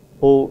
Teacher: O is a back vowel o is also a rounded vowel